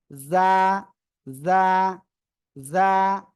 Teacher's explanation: জিহ্বার আগা, সামনের নিচে 2 দাঁতের পেট ও আগায় লাগাবেন। ওকে, আমাকে দেখেন, এই যে নিচের 2 দাঁতের পেট, পেট মানে ভিতরের অংশ, জিহ্বার আগা এরকম লাগাবো।